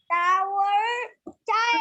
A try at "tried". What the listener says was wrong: tried. Tired না, tried, T-R-I-E-D, tried. Not tired, tried.